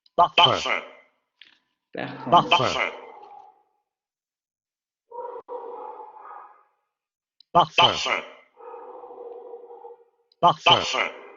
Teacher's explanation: Nasal anterior semiabierto labializado